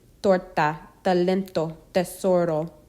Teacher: S, pronounced English S, sopa, sala, blusa. T, English T, but not explosive, with the tip of the tongue against the back of the upper front teeth.